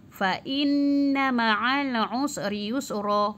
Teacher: Fa inna dengung sebab apa? Nun berbaris sabdu ataupun syaddah.